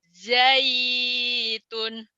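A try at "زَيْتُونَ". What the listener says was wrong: Nggak panjang limnya. Zaitun.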